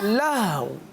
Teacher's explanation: लाह पढ़ के होंठों को गोल कर दें तो हा भी साकिन और वाव भी साकिन अदा हो जाएगा। पढ़िए लाह, लहवुन, आगे वक्फ, लहव। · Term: होंठों को गोल करना